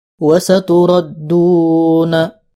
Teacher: huruf ra dibaca tafkhim atau tebal